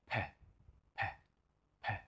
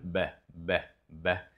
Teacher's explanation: P sound is a voiceless sound you'll hear if you pay attention to your chest that you're not going to hear any vibrations when you make the p p p sound but in this · the P I would say is more explosive and the B is slightly less. B, B. You see that it's slightly more relaxed in how I let go of the pressure.